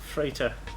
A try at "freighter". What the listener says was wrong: It sometimes sounds like you're saying frighter, like one who frights.